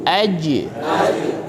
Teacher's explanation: huruf Jim itu merupakan huruf Qalqalah yang ketika sukun harus dipantulkan